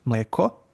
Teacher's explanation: Then you have long climbing accent, which is mleko